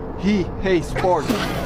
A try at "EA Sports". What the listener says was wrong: Where did you get the H from?